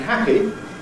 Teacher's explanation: a /p/ sound like in ‘happy’ /ˈhæpi/ really is just a momentary silence, because during the ‘hold’, you can hear nothing